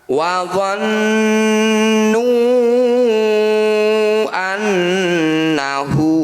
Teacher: Ini disebut bacaan mad jaiz munfasil. Cara bacanya nu atau huruf yang bertanda layar kita panjangkan 5 harokat atau 5 ketukan.